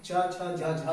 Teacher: दूसरी बात, अब हम चा, देखिए चा, छा, जब आप इसे स्लो मोशन में बोलेंगे तो आपको पता चलेगा कि चा, छा, झा, झा बोलते समय जीभ आपकी हमेशा तालु को कवर करती है, तालु को ढकती है। और देखिए दांतों से, ऊपर वाले दांतों से आपका जो तालु है उसके बीच की जो डिस्टेंस है, उसके बीच का जो एरिया है उसको मूर्धा कहते हैं।